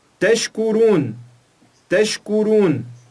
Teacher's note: nós não juntamos o shin, a letra shin, com o kaf